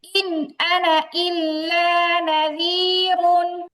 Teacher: চারটা বাক্যের মধ্যে হচ্ছে আনা শব্দটা স্বতন্ত্র এবং সেখানে টান হবে না। তাড়াতাড়ি করে পড়তে হবে। · আনা শব্দটি পৃথকভাবে আসলে আনা শব্দের আলিফে টান হবে না।